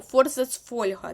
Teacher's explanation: і тут і тут у нас фо і наголос Буде якраз таки на о